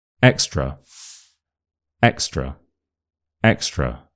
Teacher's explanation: the schwa sound at the end and this shows you that the schwah doesn't actually have to be at the start of a word can be at the start, the middle, the end, anywhere as long as there is a vowel there.